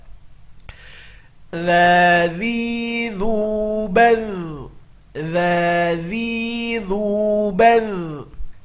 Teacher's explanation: Huruf dza harus keluar ujung lidahnya, kalau tidak dia akan berubah menjadi za. Okay? Maka hati-hati pada huruf dza.